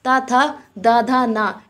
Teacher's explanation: जब हम अपने मुंह से उच्चारण करते हैं ता, था, दा, धा, ना का, तो इसमें क्या होता है, इनका उच्चारण जो होता है वो दांतों के माध्यम से होता है।